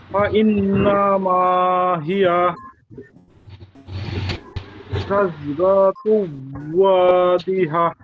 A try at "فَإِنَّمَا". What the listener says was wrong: হ্যাঁ মাশাআল্লাহ, আপনার উচ্চারণই ঠিক আছে, তবে দুইটা হরকটে একটু টান হয়ে গেল। বা ইন নামা, এই যে নামা টান হইলো, নামা হবে, নামা টান, না টান নেই। বা ইন নামা, নামা